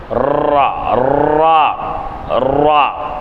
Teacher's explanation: ரா எப்படி உச்சரிப்பீங்க அப்படின்னு சொன்னால், மேல் பல்லை அடுத்து உள்ள மேல்முரசில் சற்று உட்புறத்தில் நாவின் நடுப்பகுதி படுமாறு உச்சரிப்பது. மேல் பல்லின் அடுத்து உள்ள, அடுத்துனா பல்லுக்கு அடுத்து இருக்கிறதா முரசு, சரிங்களா?